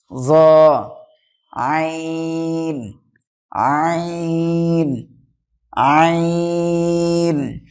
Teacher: হালাকের বা কন্ঠনালীর মাঝখানে হইতে উচ্চারিত হয়